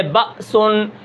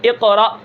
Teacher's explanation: الف ساکن ہوتا ہے اور اس سے پہلے زبر ہوتی ہے، لیکن وہ جھٹکے کے ساتھ پڑھا جاتا ہے